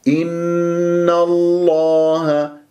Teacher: النون مرققة وفخمت اللام من اسم الجلال الله من غير تكوير